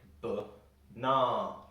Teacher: We put the stress in the middle A, so it sounds like banana, which means there are two different schwa sounds in this word.